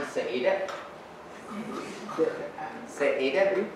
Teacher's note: the penultimate syllable, the second last syllable is always stressed